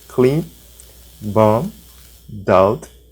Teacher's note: não é para pronunciar o B, mas ele tá ali na grafia, tá? Na escrita. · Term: B mudo